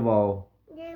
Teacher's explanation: होंठ के ना तमाम गोल यानी मुकम्मल गोल नहीं होते होंठ, ठीक है, यानी नामुकम्मल गोल करने से वाव अदा होता है